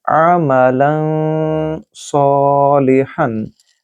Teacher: I'm not saying amalan. I'm saying lan, saying from my nose. That is gunna, which is must here because next letter is letter of ikhfa.